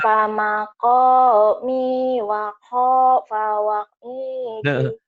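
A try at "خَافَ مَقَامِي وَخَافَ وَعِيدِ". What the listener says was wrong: Pak, jangan diputus. Ngomongnya sambung saja gitu ya. Itu mah diputus-putus ya. Khafa maqami wa khafa wa'id. Khafa maqami wa khafa wa'id.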